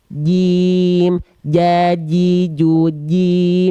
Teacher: sifat nafas keluar enggak bunda Jim Nah itu kan Masti Jim jangan sampai dia mengeluarkan percikan nafas karena Jim sifatnya dia jahar · Nah, jangan sampai ada percikan nafasnya. Ya, jadi cara melafalkan jim dari tengah lidah disentuhkan ke langit-langit, nempel.